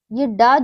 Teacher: ड जो हमारा मूर्धन्य है, अल्पप्राण भी है और घोष भी है।